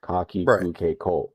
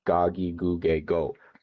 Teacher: the K sound and the G sound, they're actually kind of similar in terms of like where your tongue is in your mouth whenever you kind of say them.